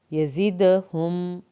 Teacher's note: دال کا قلقلہ ہوگا